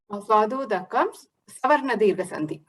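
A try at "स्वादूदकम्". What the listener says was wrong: Very good. Next one.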